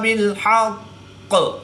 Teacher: قاف حرف مستعلیہ میں سے ہے تو اس کو پوری یعنی موٹا پڑھیں گے، اور قاف حرف قلقلہ میں سے بھی ہے، اور جب حروف قلقلہ مشدد ہوں تو قلقلہ میں خوب جماؤ کے ساتھ کریں گے، اس کو قلقلہ کبریٰ بھی کہتے ہیں. وقف کی حالت میں قاف مشدد کی زیر کو ساکن کر دیں گے اور قلقلہ کو بھی اور تشدید کو بھی باقی رکھیں گے